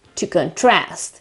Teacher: first syllable on the o contrast while in the second case it is a verb and you shift the stress to the second syllable to contrast in fact the stress in this case is on